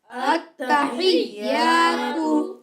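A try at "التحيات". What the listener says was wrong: ہاں، تا پر بھی زور ڈالنا ہے اور یا پر بھی زور ڈالنا ہے، یعنی مشدد حرف ہے اس پر تھوڑا زور ڈالنا ہے، ڈبل مرتبہ پڑھنا ہے، التحیات۔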